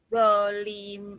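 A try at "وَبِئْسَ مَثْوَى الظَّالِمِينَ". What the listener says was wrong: Zalnya panjang. Wabi sama wazzalimin.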